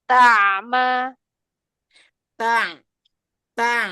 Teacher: huruf yang sebelumnya jangan isbah ya, jangan dipanjangin. Tawassutnya di ain sukunnya.